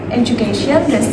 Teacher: the stress occurs on the third syllable in education